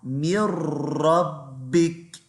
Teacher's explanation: Now remember, any letter that's grey, you miss it out. So you don't say min, you say mir, and you join it into the ra.